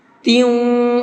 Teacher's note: تیوں کے اندر تھوڑا سا آواز کو ناک میں روکیں گے